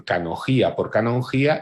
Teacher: el debilitamiento de la N, que demuestra en canogía por canongía